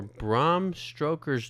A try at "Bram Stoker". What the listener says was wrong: Did you say Bram Stoker? Stoker. You are just saying it wrong. No, you're adding a letter into the last name.